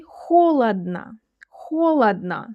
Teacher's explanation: in the last word there are three letters o, but only one of them sounds like the real o. Others sound like ah.